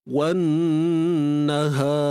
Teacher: Jadi disebabkan itu ra ini perlu dimatikan dengan sifat yang tebal. Ra ni perlu dimatikan dalam keadaan tebal.